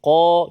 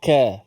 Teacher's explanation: Bezanya antara makhrajnya ialah qaf pangkal lidah, kaf depan sedikit pangkal tu.